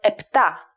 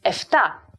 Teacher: so today the plosive p of epta became the fricative fee like in efta although the original version sounds more standard